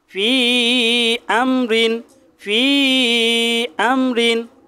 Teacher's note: মাদের হরফের পরে ভিন্ন শব্দের শুরুতে যদি হামজা আসে তাহলে 3 আলিফ টেনে পড়তে হবে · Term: মাদ্দে মুনফাসিল